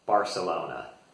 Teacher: Most Americans will pronounce the C like a S sound, which is different than they actually pronounce it in Catalan there.